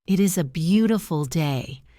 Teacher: My voice goes down at the end on the word day. It signals that I am finished with my thought.